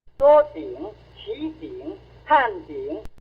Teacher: Zhao named the non-final allotone the half tone 3 because it only has the fall.